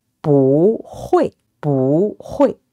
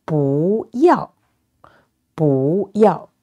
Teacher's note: if it followed by a fourth tone, it's changed into a second tone